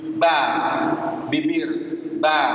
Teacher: Ba sifat maksudnya makhrajnya dari kedua bibir. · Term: huruf ba